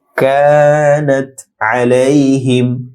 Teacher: যুক্ত হবে, লাতি তি এক আলিফ লম্বা হবে, কানাত আলাইহিম কা ছোট কাফ নরম হবে, এক আলিফ লম্বা হবে